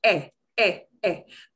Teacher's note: It's kind of between a short E and a long A sound